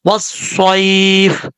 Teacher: یہاں پر اس کو لمبا کرنے کی ضرورت نہیں ہے کیونکہ یہاں پر یا لین ہے، یا لین کو لمبا نہیں کیا جاتا، وصائف، اس طریقے سے پڑھا جائے گا۔